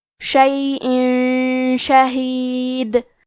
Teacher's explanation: کلمت شیئن کے آخر میں حمزہ کے نیچے تنوین زیر ہے، پھر حرف شین ہے کلمت شہید، شین حروف الاخفاء میں سے ہے تو ہم یہ حکم کو غنہ کے ساتھ ادا کریں گے۔ شیئن شہید، آخری میں حرف دال ہے، ہم یہ کلمہ پہ رکیں گے تو دال پہ جزم سے رکیں گے، لہذا یہاں دال کا حکم ہوگا قلقلہ، تو ہم یہ حرف کو ہلاتے ہوئے یہ کلمہ کو پڑھیں گے۔